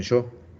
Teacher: es un yeísmo argentino y uruguayo, que es como más bien como una fricción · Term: yeísmo porteño